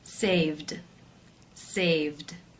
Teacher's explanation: For example, the verb to save. The final sound is the v voiced consonant sound, so the ed will take the d voiced d sound ending.